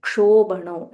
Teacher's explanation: It is half ka and a full murdanya sh.